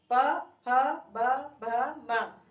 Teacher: हमारे ओठ जो है वो आपस में टकरा रहे हैं, छू रहे हैं, यानी कि हमारे ओठों को स्पर्श करती हुई ध्वनि निकल रही है। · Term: ओष्ठ ध्वनियां